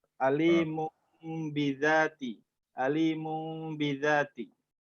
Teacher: merubah bunyi nun mati tanwin dengan bunyi mim yang disamarkan disertai dengan suara mendengung